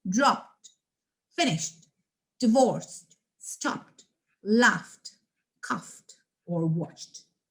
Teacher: the t is blended together with the previous consonant and the next is it not pronounced as an extra syllable